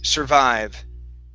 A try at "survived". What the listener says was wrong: with that r right now your tongue was pointing down you were saying survived instead of survived